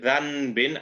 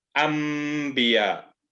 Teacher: It doesn't show it all the time, but remember it, after Noon Sakin, if a Ba appears, you will turn that Noon Sakin into a Mim Sakin